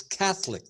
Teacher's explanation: The accent is on the first syllable.